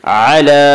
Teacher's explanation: علی لام کے اوپر کھڑا زبر ہے، کھڑا زبر برابر ہے الف مدہ کے، اس لیے کھڑا زبر کو ایک الف کے برابر کھینچ کر پڑھیں گے